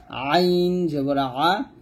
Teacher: চাপ দিয়ে বলতে হবে হলকের মাঝখান থেকে